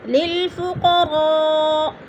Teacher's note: فقراء میں جو ہے مد متصل ہے، 4 الفی مد ہے، اس کو 4 الف کے برابر ہم نے اس کو کھینچ کر پڑھنا ہے۔